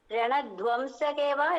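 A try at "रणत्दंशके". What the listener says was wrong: ரணதம்சகே தான், தம் தான். துவம் கிடையாது, தம் தான். ரணதம்சகே அந்த த மட்டும்தான் அழுத்தி சொல்லணும்.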